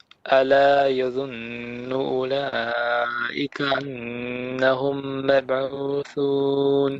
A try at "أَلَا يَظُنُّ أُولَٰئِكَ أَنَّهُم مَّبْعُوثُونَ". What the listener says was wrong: No, you're skipping the alif.